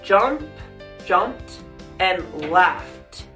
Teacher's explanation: If you have a voiceless ending of the root word and you add the ed, then you're gonna change that ed to a t sound